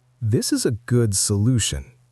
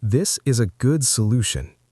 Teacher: Now bring your voice down at the end. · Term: Falling tone